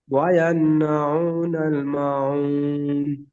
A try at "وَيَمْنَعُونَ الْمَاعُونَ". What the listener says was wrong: মা টান দেন। ওয়ায়ামনাউনাল মাউন। ওয়ায়ান আপনার এখানে ওয়াই আন শোনা যাচ্ছে, ওখানে একটু ভালো করে পরিষ্কার করে বলে ওয়ায়াম। ওয়ায়াম। ওয়ায়াম।